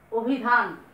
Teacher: যেমন ধরেন আমি বললাম অভিধান, অভিধান, স্বর ও পেয়েছি, রস্বইকার আছে, উচ্চারণটা হয়ে যাবে এরকম অভিধান। লক্ষ্য করো নয়ের সাথে কিন্তু কোনো অ উচ্চারণ করছি না